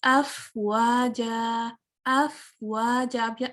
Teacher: अफवाजा, अब यहाँ देखिए, अब ये फा है ना, तो सुकून के साथ जो हम्स है ना ये और क्लैरिटी के साथ फील होता है, आपको समझ आएगा, अदा होगा, इसकी अदायगी और क्लियर हो जाती है जब ये वाले हरूफ सुकून के साथ आए। जब ये साकिन होते हैं तो जो इसकी सिफ्त है ना हम्स की ये और क्लियर हो जाती है। अफवाजा, अगर आप थोड़ी देर सांस को बहाल नहीं रखेंगे और इसको कट शॉर्ट कर देंगे तो वो या तो बाउंस हो जाएगा और उसमें वो ब्यूटी नहीं रहेगी जो एक अच्छी तिलावत में होनी चाहिए, ठीक है।